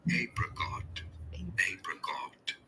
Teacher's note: You do want to stress on the first syllable.